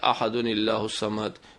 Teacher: تنوین کی آواز جو ہے زبر زیر پیش میں بدل جائے گی اور نون کے نیچے زیر دے کر ملائیں گے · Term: نون قطنی